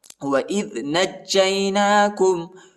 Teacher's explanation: وَإِذْ نَجَّيْنَاكُمْ مِنْ آلِ فِرْعَوْنَ، وَإِذْ نَجَّيْنَاكُمْ، نون کو جیم کے ساتھ ملانا ہے اور جیم کو یا کے ساتھ ملانا ہے، جیم کو شدت کے ساتھ پڑھنا ہے، سختی کے ساتھ پڑھنا ہے، جیم پر شد آیا ہے